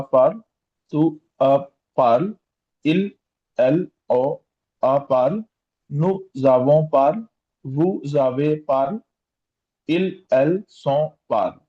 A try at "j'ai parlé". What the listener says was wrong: We have an accent aigu over this E, so it's going to sound like an A. Parler. So it's going to be je, but we have a vowel here, so it's going to be j'ai parlé, tu as parlé. j'ai parlé.